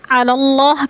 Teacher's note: علی اللہ کی اللہ پر پڑھی جائے گی، کیونکہ اللہ سے پہلے لفظ لام کے اوپر زبر ہے تو اللہ کو پر کر کے پڑھیں گے